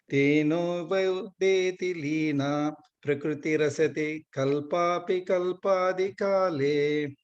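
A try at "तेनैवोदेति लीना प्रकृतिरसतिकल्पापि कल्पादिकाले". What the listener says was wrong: Second line, tenai vodeti lina. Yeah. The second time you said ten or something.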